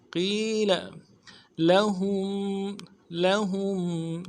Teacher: قیل لام کو نرمی سے پڑھیں گے، قیل لہم لام کو نرمی سے پڑھیں گے، ہم میں میم ساکن کو اظہار کے ساتھ پڑھیں گے